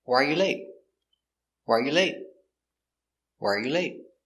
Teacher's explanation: why are pronounced together wire